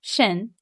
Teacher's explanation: And second tone, shén, is a rising tone.